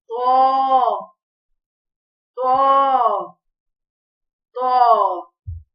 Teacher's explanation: جب زبان کی نوک اوپر کے دو دانتوں کی جڑ سے لگے تو طا ادا ہوتا ہے، طا موٹا پڑھا جائے گا۔